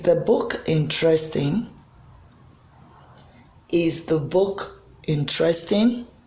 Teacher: The pitch there is going up in the word interesting. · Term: rising intonation